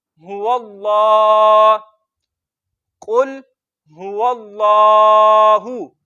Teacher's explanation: कुल, हा पर होंठ गोल करेंगे, वाव को लाम के साथ मिलाएंगे और हा और वाव को लंबा नहीं करना। लाम को लंबा करना क्योंकि उस पर खड़ी जबर है, और लाम को मोटा पढ़ना क्योंकि लफ्ज़ अल्लाह के लाम से पहले हर्फ पर जबर है। · लाम मुशद्दद है, इस पर थोड़ा सा रुक के पढ़ेंगे